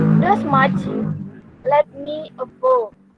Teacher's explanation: the third line has 3 feet that start without stress and then continue to be stressed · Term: iambic 3 meters